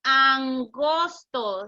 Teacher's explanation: la N de angosto, el contacto sucede en la parte de atrás de la boca y la lengua no se mueve. Si decimos angosto, si observan, les puse ahí una figura donde muestra que la fuerza la hacemos en la parte de atrás de nuestra boca y la lengua no lo vamos a mover.